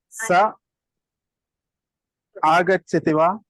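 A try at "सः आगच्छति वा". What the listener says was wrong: You have to pronounce it long. Try to habituate to prolong long words long, short words short.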